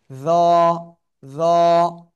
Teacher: জিহ্বার আগা উপরের দুই দাঁতের আগার সাথে লাগে